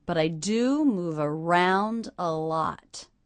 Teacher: The stressed syllables in that sentence are do, round, and lot.